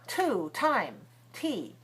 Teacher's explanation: So if it's at the beginning of a stressed syllable, the T has to be very sharp. A lot of air comes out. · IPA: /t/